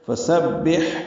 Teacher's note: کو با سے ملانا ہے، با کو حا سے ملانا ہے، حا ساکن پہ ہمس ہے